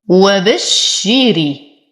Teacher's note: وبشري، الحروف كلها مرققة، انتبه لكسرة الراء وتم الكسر ورقق الراء لأنها مكسورة